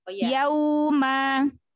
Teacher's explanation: Wow, sukun sebelumnya fathah. Lin pada huruf wow itu monyongin mulutnya. Yauma. Tapi jangan dinaber.